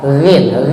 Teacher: Ghin itu wastul halqi. Wastul halqi, tarful halqi, di ujung tenggorokan ini, di atas.